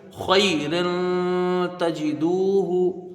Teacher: را کے نیچے دو زیر کی تنوین ہے، تنوین کے بعد حروف اخفا کا تا ہے، ایک الف کی مقدار یہاں غنہ کر کے پڑھیں گے۔ تا کے اوپر زبر ہے، جلدی پڑھا جائے گا۔